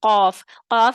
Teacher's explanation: زبان کی جڑ تالو کی طرف بلند ہوتی ہے یا اٹھتی ہے. آگے سے نہیں اٹھتی، پیچھے سے اٹھتی ہے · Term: استعلاء